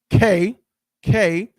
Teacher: back in the back of the throat behind your palate